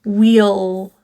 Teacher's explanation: The word will gets contracted with the word we and becomes just the L.